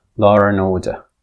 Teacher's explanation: in rapid speech the D would drop. So we would have a case of deletion as well law and order.